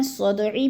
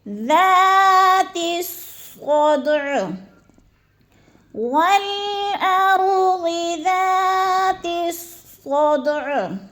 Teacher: وقف کی صورت میں ہم نے عین بالکل نہیں پڑھنی بلکہ ہم نے عین کو ساکن کر کے پڑھنا ہے، جزم لگا کے پڑھنا ہے عین کے اوپر، جیسے ذات الصدع والارض ذات الصدع.